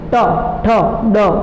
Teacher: આખી જીભ વળી જાય અને તાળું કરતાં થોડું ઉપર તો એને કહેવાય મૂર્ધન્ય.